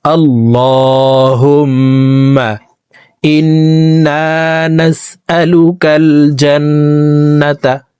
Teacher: হুম এখানে ওয়াজিব গুন্নাহ, 3 সেকেন্ড পরিমাণ গুন্নাহ করে পড়ব।